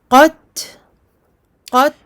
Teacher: on n'oublie pas le ta et son hams, le souffle qui sort avec le ta sakin et uniquement sakin.